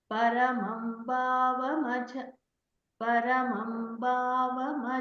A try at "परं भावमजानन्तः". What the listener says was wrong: not paramam, param bhavamajānantah।